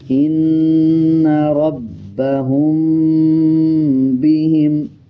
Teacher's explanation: اس میں دیکھیں میم کے اوپر جزم ہے اور اس کے بعد با آ رہا ہے. جب میم کے اوپر جزم ہو اور اس کے بعد با آ جائے تب بھی غنہ کیا جاتا ہے اور غننے کی آواز کو ناک سے نکالیں گے.